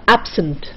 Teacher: when it is a noun or an adjective, the accent is on the first syllable.